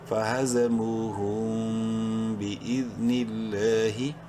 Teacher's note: فا زبر فا، ہا زبر ہا، زا زبر زا، فہذا، میم واو پیش مو، واو مدہ ہے، میم کو ایک الف کے برابر لمبا کریں گے، ہا میم پیش ہم، فہزموہم۔ میم ساکن کے بعد چونکہ با ہے اس لیے اس میم میں غنہ کریں گے